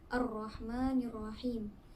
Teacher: Ar-Rahmanirrahim terdapat hukum alif lam syamsiah iaitu alif lam bertemu dengan huruf syamsiah iaitu ra. Hukum bacaannya adalah idgham iaitu memasukkan ke huruf ra.